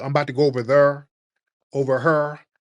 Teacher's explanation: Louisville, Kentucky, those places that's by rivers. You notice they got them accents with what they call the intrusive R, because the Irish used to talk with a lot of hard R's.